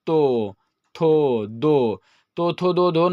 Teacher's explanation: ये सब बोलने में दांत, जीभ जो है वो दांत में आके सटता है, इसलिए इसे दंत वर्ण कहते हैं।